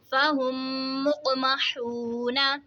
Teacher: میم ساکن کے بعد دوسری میم آ رہی ہے تو یہاں پہ یہ ادغام شفوی ہوگا، یعنی غنہ کر کے پڑھیں گے